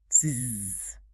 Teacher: You will feel a strong, rapid vibration buzzing against your fingers. To make that zzz sound, your brain sent a signal to your throat to snap your vocal cords together. So they're blocking the air. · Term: voiced sound